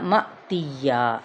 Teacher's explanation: یہاں حمزہ ساکن ہے تو یہاں پہ جھٹکا دیں گے